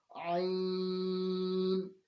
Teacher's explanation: حلق کے درمیان سے پڑھنے کی کوشش کرتے ہیں